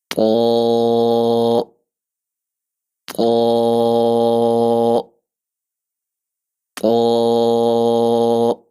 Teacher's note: اس کے بعد ہمارا اگلا حرف طا، اس کی ادائیگی زبان کی نوک سامنے جو اوپر والے دو دانت ہیں ان کی جڑ سے لگے گی اور پچھلے حصے کو زبان کے ہم اوپر تالو کی طرف اٹھائیں گے، تو اس سے اس کے اندر موٹائی آ جائے گی، اس کی آواز موٹی ہو جائے گی، طا طا طا۔